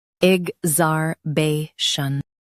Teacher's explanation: Stress zar and keep shun soft.